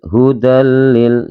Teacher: Cara membacanya dimasukkan tapi dengan tidak mendengung teman-teman ya, dimasukkan dengan tidak mendengung. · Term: idgham bila hunna